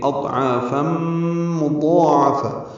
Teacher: ع الف مدہ ہے، 2 حرکات لمبا کریں گے، فا بر تنوین ہے، 2 زبریں اور اس کے بعد میم آنے کی وجہ سے ادغام ہوگا، ادغام ناقص ہے، غنہ کریں گے